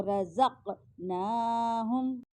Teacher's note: قاف آ رہا ہے تو قاف ساکن ہے, تو یہاں پہ قلقلہ ہو رہا ہے, حرف قلقلہ میں سے بھی ہے قاف.